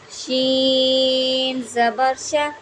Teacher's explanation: شین کو ہم نے زبان کے درمیان اور تالو کے درمیان سے ادا کرنا ہے، را کو ہم نے باریک پڑھنا ہے، را کے نیچے زیر ہے تو اس کو ہم باریک پڑھیں گے، ٹھیک ہے۔